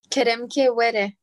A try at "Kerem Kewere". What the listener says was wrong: Ok, très bien.